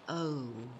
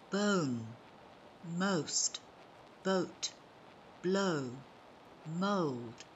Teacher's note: the vowel sound oh it is also a long vowel and diphthong